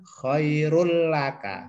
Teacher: artinya bahwa ini tidak dengung karena tanwin ketemu lam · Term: Idgham bila gunnah